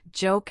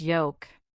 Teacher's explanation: For joke, your tongue touches the roof of your mouth. For yoke, it stays high and flat without touching.